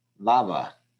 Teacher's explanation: lava two syllables the first syllable is the stressed syllable